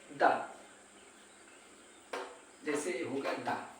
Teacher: ऊपर जिह्वा गई फिर पट से नीचे आई दा, ये हो गया उत्क्षिप्त। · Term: उत्क्षिप्त व्यंजन